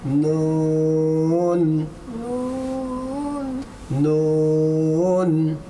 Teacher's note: জিব্বার আগা, সামনে উপরে দুই দাঁতের গোড়ার সঙ্গে লাগাইয়া নুন বলেন